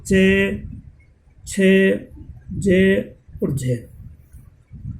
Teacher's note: और स्पर्श संघर्षी वे ध्वनियाँ जिनका उच्चारण करते समय दो उच्चारण अवयव परस्पर चिपक जाते हैं तथा तब तक अलग नहीं होते जब तक कि उच्चारण न हो जाए। ऐसा होने के कारण प्राणवायु संघर्ष या घर्षण के साथ बाहर निकलती है।